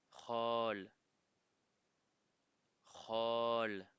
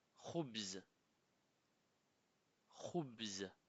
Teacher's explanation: Il n'y a pas de réel équivalent en français. C'est un son qui vient du début de la gorge. Par exemple, Khol, Khol, qui veut dire oncle maternel.